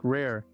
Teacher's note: the r is rolled slightly creating a soft purring sound